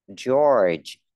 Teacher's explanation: có âm r cong lưỡi ha. George, có âm r cuối từ này rất khó đấy.